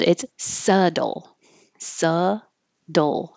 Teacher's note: we don't hear a B, we don't hear a T, there's no E sound.